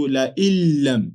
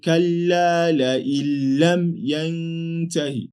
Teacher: Al-idgham bighayri gunna. That's why I recited la illam as if the Nuun was not there